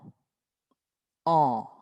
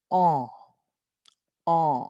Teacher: Para ayudarles, yo me pongo de perfil y tienen que ver que la boca vaya un poco hacia adelante. Y es una A un poco más larga, entonces va a ser ON.